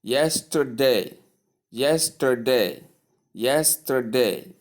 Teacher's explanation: you have the T sound pronounced with the shwa sound. · Now, if you look at the word yesterday, you will see that the stress occurs on the first syllable